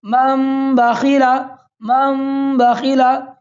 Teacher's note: تنوین یا نون ساکن کے بعد با آئے تو نون کو میم سے بدل کر غنہ اور اخفا کے ساتھ پڑھیں گے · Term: اقلاب